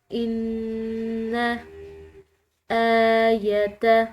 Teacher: ان آیت، حمزہ کو لمبا پڑا کیونکہ اس کے اوپر کھڑی زبر ہے، اور کھڑی زبر جو ہے وہ عام زبر کے مقابلے میں کھنچاؤ کے ساتھ پڑھی جاتی ہے، لمبا کر کے پڑھا جاتا ہے اس کو، اور اس کو جو لمبا پڑھنے کا جو ٹائم پیریڈ ہوتا ہے، جو دورانیہ ہوتا ہے، وہ 1 الف کے برابر ہوتا ہے۔